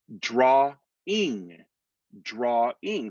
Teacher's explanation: now this is a intrusive r that's happening between two syllables